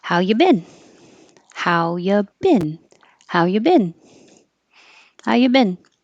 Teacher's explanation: You can say you or ya because it's not stressed.